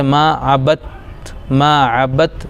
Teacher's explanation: دال ساکن ہے لیکن دال کو نہ پڑھ کے ڈائریکٹ با کو تا میں ملا دیں گے جیسے ما عبت، ما عبت، دال ختم ہو جائے گا. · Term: ادغام